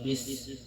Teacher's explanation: Dalam lafaz bismillah, bismillah sinnya punya sifat hamas. Ada angin keluar, anginnya bis sofir, seperti suara ular bis.